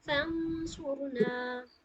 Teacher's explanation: فانصرنا، یہاں پہ غنہ کے ساتھ اخفا کریں گے.